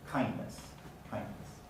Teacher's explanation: kindness is variable some people delete the d kind becomes kindness kindness but some people in careful speech do · the this some people will keep the d in certain dialects the standard pronunciation is to delete the d in that context